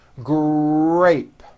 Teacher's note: in the word grape the r sound is stronger and you even hear it more than the G sound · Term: R blends